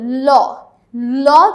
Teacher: যখন আমরা উচ্চারণ করি 2 পাশ থেকে বাতাস আসা, পার্শ্বিক। দেখো ল, ল যখন আমরা উচ্চারণ করি তখন আমরা জিহ্বাটা এমনভাবে ব্যবহার করি যে জিহ্বার 2 পাশ থেকে বাতাস বের হয়ে আসতে পারে। আর পার্শ্বিক ব্যঞ্জন হচ্ছে মাত্র একটি, সেটা হচ্ছে ল।